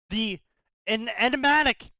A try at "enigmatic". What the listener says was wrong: The enigmatic? Yeah, you're just saying just saying enigma. and just putting attic at the end.